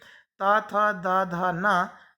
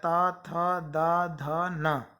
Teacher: ता, था, दा, धा, ना, ये जो वर्ण है वो दंत्य, इनका उच्चारण स्थान दांत है, दंत है, तो ये कहलाएंगे दंत वर्ण। इनको बोलते समय हमारी जीभ दांत को टच करती है।